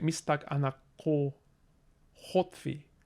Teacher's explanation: even dropping that oo down a little bit to closer to o